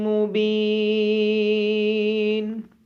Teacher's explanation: میم مشدد ہونے کی وجہ سے میم پہ غنہ ہوگا۔ با کے بعد یا مدہ ہونے کی وجہ سے با کو لمبا کریں گے۔